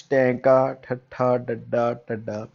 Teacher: ਫਿਰ ਸਟੂਡੈਂਟਸ ਟੈਂਕਾ, ਠੱਠਾ, ਡੱਡਾ, ਢੱਡਾ ਜਦੋਂ ਆਪਾਂ ਬੋਲਦੇ ਹਾਂ ਤਾਂ ਉਸ ਟਾਈਮ ਤੇ ਉਲਟ ਜੀਭ, ਆਪਣੀ ਜੀਭ ਹੈ ਜਿਹੜੀ ਉਹ ਉਲਟ ਕੇ ਨਾਲ ਲੱਗਦੀ ਆ ਉੱਪਰ ਤਾਲਵੇ ਦੇ, ਤਾਂ ਇਸ ਕਰਕੇ ਇਸ ਨੂੰ ਉਲਟ ਜੀਭੀ ਕਹਿੰਦੇ ਆ ਸਟੂਡੈਂਟਸ।